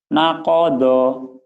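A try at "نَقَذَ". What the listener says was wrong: zo bulat, nakozo,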